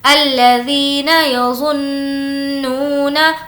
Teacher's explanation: الَّذِينَ يَظُنُّونَ، اس طریقے سے ناک میں آواز کو روکیں گے جسے ہم غنہ کہتے ہیں کیونکہ نون پر تشدید ہے